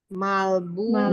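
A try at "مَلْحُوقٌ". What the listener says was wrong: apa? Malhu ya. Malhu. Jangan ketularan yang di atas. Nggak ada baknya di situ.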